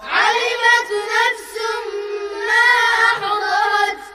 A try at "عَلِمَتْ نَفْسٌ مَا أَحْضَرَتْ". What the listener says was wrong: لا تقلقلون التاء والحاء.